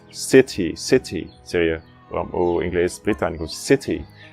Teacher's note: no britânico, esse T se fala como T mesmo